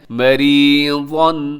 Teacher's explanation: یہاں را باریک ہوگا کیونکہ را کے نیچے زیر ہے